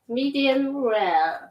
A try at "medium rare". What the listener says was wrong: see you still you're still carrying that m a little bit